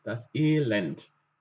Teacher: dass ein E lang ausgesprochen wird: und ein E kurz